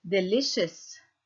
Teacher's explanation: السي هون لفظناها إش, مش دائما هيك بصير معنا, في بس في بعض الكلمات القليلة نلفظ السي إش.